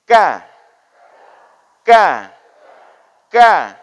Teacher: hati-hati di huruf k ini jangan sampai berangin